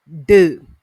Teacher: D is voiced alveolar plosive because during the production of this D sound, tongue is on the alveolar ridge or tongue touches the alveolar ridge